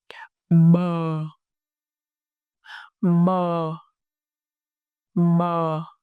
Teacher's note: Your lips shake, both lips gently close. The airflow, you release a soft voice sounds as lip part.